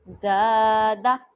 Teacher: زا کو زیادہ لمبا کیا لیکن دال کو نہیں کیا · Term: الف مدہ